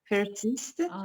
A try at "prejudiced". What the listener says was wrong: No, you're close. No, PRE. And then J. I'm giving you away. Prejudiced. Prejudice.